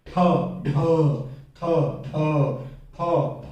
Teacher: महाप्राण, क्योंकि ज्यादा प्राणवायु लग रही है, ठ, ढ, थ, ध, फ, फ, तो इसलिए इनको महाप्राण कहा जाता है।